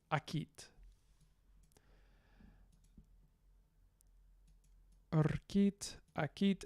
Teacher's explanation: And then we have this glide vocalization, which means that a glide in this awkward position, rkit, turns into a vowel, akit